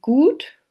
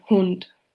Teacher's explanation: The closed back rounded vowel occurs in Gut, while the short version is in Hund.